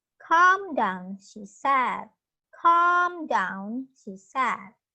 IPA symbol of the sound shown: ɑ: